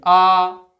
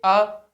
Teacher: अर आ को दीर्घ करेंगे तो वही जीभ आपकी पीछे चली जाएगी। आ थोड़ी सी पीछे गई अ बीच में